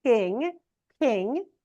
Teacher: you can hear King I've aspirated it